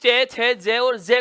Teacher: इस चय, छय, जय और जय को बोलते हैं तो हवा को थोड़ा सा संघर्ष भी करना पड़ता है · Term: स्पर्श संघर्षी